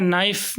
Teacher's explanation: नाइफ़ में के का जो साउंड है वो हमने ओमिट कर दिया